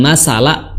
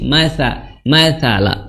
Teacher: Kemudian sa di ujung lidah bertemu dengan ujung gigi seri atas. Sa, bukan masala, bukan masa, tapi mathala, seperti itu.